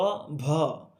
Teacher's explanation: ভ বলার সময় কি হচ্ছে একটু কিছুটা বাতাস বের হয়ে যাচ্ছে